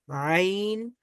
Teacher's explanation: হলকের মধ্যভাগ থেকে উচ্চারিত হয় আইন